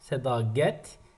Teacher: burda l d əvəzlənməsi baş verir